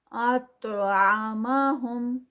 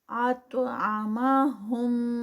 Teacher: تو ہیوی اور ساتھ میں تو کا قلقلہ